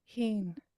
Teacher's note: the whole vowel should be long and high. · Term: high tones